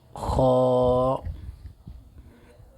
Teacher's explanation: आखिर हल्क से खा अदा होता है